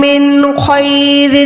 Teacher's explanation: نون ساکن کے بعد خو ہے تو نون ساکن کو ظاہر کریں گے